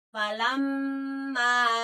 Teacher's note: Di situ pun memang ada tasyid ya. Ketika ada tasyid itu kan ditahan ya ditekan dan ditahan karena memang dia mim ya ada mim tasidnya.